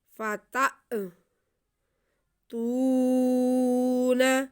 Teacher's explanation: الف پہ کوئی بھی حرکت زبر زیر پیش ساکن شاد مد آ جائے تو یہ حمزہ بن جاتا ہے، تو یہاں پہ ہمارے پاس الف کے اوپر ساکن ہے، تو اس لیے ہم الف کو جھٹکا لگا کے پڑھیں گے تھوڑا سا۔